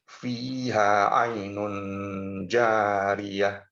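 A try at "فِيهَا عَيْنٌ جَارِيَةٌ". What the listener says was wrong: Nah, masuk lagi ke ikhfa ya. Fiha ainun jariyah. Jadi tidak kena kepada nun. Ainun tidak. Ainun jariyah.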